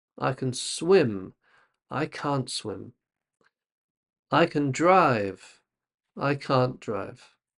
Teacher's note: we often focus a bit more on the can't than the the verb.